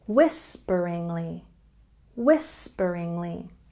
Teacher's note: once again stress on the first syllable